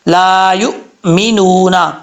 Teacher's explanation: یا کے بعد حمزہ ہے، حمزہ جھٹکے کے ساتھ پڑھا جائے گا، حمزہ اگر ساکن ہو تو جھٹکے کے ساتھ پڑھا جاتا ہے، اور اگر حمزہ متحرک ہو یعنی اس کے اوپر زبر ہو، نیچے زیر ہو، پیش ہو، اس کو متحرک کہا جاتا ہے، تو پھر جو ہے وہ سختی سے پڑھا جاتا ہے، جھٹکے سے پڑھنے کی ضرورت نہیں ہے اس کو۔ · لام کے آگے الف ہے، ایک الف کی مقدار لمبا کر کے پڑھیں گے